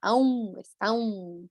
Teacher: Também nós adicionamos aí sonoramente um ão, né? Parece que tem uma letra U sonora, né? Na pronúncia. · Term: nasalização